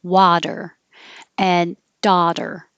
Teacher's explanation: two words that have the same vowel, ah. So really open, lower your jaw at ah